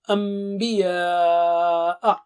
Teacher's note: we should do it with ghunna. That is stretch double with nasal sound.